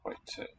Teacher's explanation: note the old iu diphthong giving modern oi